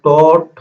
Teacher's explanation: এই জিহ্বার অগ্রভাগটা কোথায় স্পর্শ করতেছে, তারা দাঁত এবং তালুর মাঝখানে, ঠিক আছে। এজন্য তাকে বলা হয় প্রস্থান দন্তমূলীয় বা মূর্ধন্য বর্ণ, ঠিক আছে।